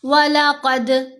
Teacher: دال کے اوپر ہم نے قلقلہ کرنا ہے۔ قلقلہ آواز کا ہلنا، آواز میں جنبش یا ارتعاش کا پیدا ہونا۔